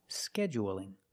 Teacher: it's light because the L is between vowels